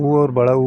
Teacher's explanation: है ओष जो है उ और उ हो जाता है जवाब इनका उच्चारण करेंगे तो होठ जो है गोला आकार में आ जाता